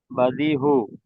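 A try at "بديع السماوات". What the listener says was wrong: হু না, এটা হলো আইন। বাদি উ, বাদি সামা।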